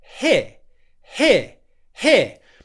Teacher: you start in the e position the short vowel sound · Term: ear diphthong